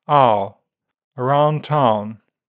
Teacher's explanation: in old-fashioned RP, the starting point is open, back, and can be longer with a less movement at the end. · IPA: /aʊ/